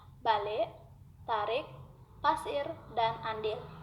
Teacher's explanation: Menjadi kurang nyaring karena posisi lidah berada lebih rendah apabila vokal I itu berada pada suku tertutup. Misalnya, vokal I pada suku akhir pada kata-kata balik, tarik, pasir, dan andil.